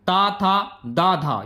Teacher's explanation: ये तालु के हो गए दंत से त था द धा ये दंत से बोले जाते हैं